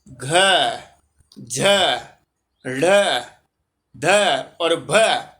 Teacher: ये स्पष्ट है, संवार है, वीवार नहीं है, वीवर वाला नहीं है, संवर है, नाद है, घोष है, लेकिन महाप्राण है।